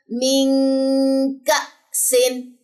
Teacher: حمزہ جزم جھٹکا لیتا ہے، یہاں پہ جھٹکا نہیں بھولنا.